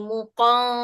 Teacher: Nun tu dia tak jelas. Dia bunyi samar-samar.